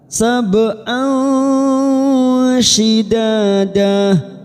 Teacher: Kita baca jelas, fawqakum sab'an, ba sukun qalqalah sugroh karena mati asli di tengah kalimat. Kita pantulkan